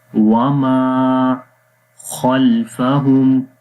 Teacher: خا کو موٹا پڑھیں گے، حروف مستعلیہ میں سے ہے